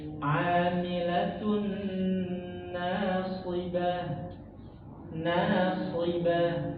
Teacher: Jadi na-nya tipis. Jangan nasibah, jangan ke bawah. Huruf nun jangan ke bawah huruf shad, jangan.